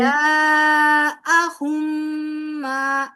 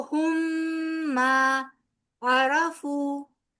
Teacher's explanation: फिर ٹھیک ہے जाअहुम मा, मीम मुशद्दद है ना, मीम का मीम के साथ इदगाम भी हो रहा है